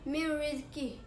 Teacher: Nun mati bertemu dengan huruf ra. Cara membacanya, suara nun mati dimasukkan ke huruf ra serta tidak dengung. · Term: idgham bila gunnah